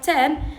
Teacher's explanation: the t sound at the beginning of a word like ten is a voiceless alveolar stop